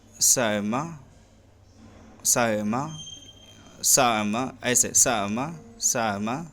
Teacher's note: اور اگر اس کو وہ پڑھیں، یعنی حمزہ کو خود اپنے مخرج اور اس کے ماقبل جو حرکت ہے اس کے مطابق حرف علت کے مخرج کے درمیان سے پڑھیں تو پڑھیں گے سائمہ سائمہ سائمہ، ایسے سائمہ سائمہ، زیادہ جو ہے حمزہ کو بھی ظاہر نہیں کریں گے اور زیادہ حرکت کو بھی ظاہر نہیں کریں گے، درمیان سے پڑھیں گے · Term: بین بین